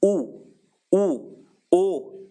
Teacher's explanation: वृत्ताकार में होठ जो हैं वो बिल्कुल गोल गोल हो जाएंगे। गोल गोल हो जाएंगे, क्या हो जाएंगे?